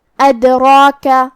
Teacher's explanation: یہاں دال کا حکم ہے قلقلہ، ہمیں حرف دال کو ہلاتے ہوئے یہ کلمہ کو ادا کرنا ہے. را کی حرکت ہے زبر اور اس کے بعد کھڑا زبر ہے جو کہ یہاں مد طبیعی ہے اور را کا حکم ہے تفخیم، تو ہم را کو اور مد الف کو دونوں کو تفخیم سے مطلب بھاری آواز میں ادا کریں گے.